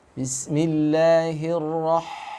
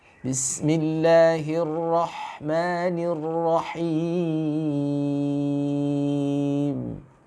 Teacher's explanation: huruf H itu punya sifat rokhawah, mengalir. Ya. Yang kedua, huruf H itu ya dihamas.